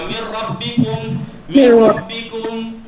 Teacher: نون ساکن کے بعد رے ہو تو ادغام کامل ہوگا. میر ربکم میر ربکم. ٹھیک ہے بغیر غنہ کے ہوگا